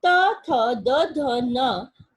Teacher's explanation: यदि आप भी उच्चारण करके देखें तो त, थ, द, ध, न उच्चारित करते समय हमारी जीवा हमारे दांतों को स्पर्श करती है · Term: त वर्ग